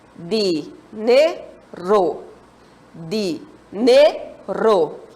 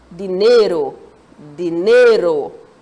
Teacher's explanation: já sabemos que a sílaba tônica, a sílaba forte, é qual? Ne.